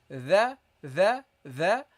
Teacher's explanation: you pronounce it by putting your tongue slightly between your teeth